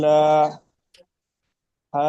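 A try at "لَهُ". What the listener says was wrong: লামটি টান দিচ্ছেন, লাম টান হবে না, লাহু হারাকাত তাড়াতাড়ি পড়তে হয়, টান দেওয়া নিষেধ। উল্টা পেশ, উল্টা পেশ।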